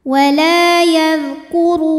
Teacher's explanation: huruf ra dibunyikan secara tafkhim karena ra-nya berbaris dhammah. Cara bacanya tebal, pangkal lidah dinaikkan.